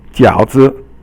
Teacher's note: So 饺 is third tone, and 字 is actually 轻 声. You would think it's like fourth tone, but you actually pronounce it as silent.